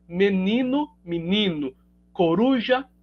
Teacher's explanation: A vogal tônica é alta, né? Menino, a vogal tônica é alta, então a pretônica acaba sendo alçada a uma vogal alta também por influência dessa tônica, né? Então, menino, coruja, com uma vogal do núcleo, a vogal tônica alta, a pretônica acaba sendo alçada também. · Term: harmonização vocálica